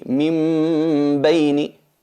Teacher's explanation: transformamos la nun en una mim, pero aplicándole la nasalización